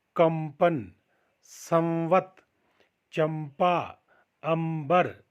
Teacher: यदि अनुस्वार पवर्ग के वर्णों अर्थात प, फ, ब, भ तथा व वर्ण से पूर्व हो तो उसका उच्चारण मौ के समान होता है।